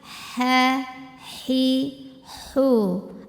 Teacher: Ha keluarnya dari tenggorokan tengah, halus seperti tidak ada kotoran sama sekali.